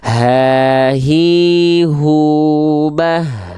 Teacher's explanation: dilafalkan dari yang dari pangkal tenggorokan ya dari pangkal tenggorokan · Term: H besar